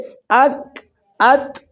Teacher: اک ات ادا جب ہم کرتے ہیں ان میں سانس جاری نہیں ہوتا، بظاہر معلوم یہ ہوتا ہے کہ سانس جاری نہیں ہوتا بلکہ سانس بند ہو جاتا ہے۔